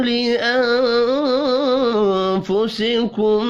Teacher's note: نون ساکن کے بعد فا ہے، اخفاء حقیقی ہوگا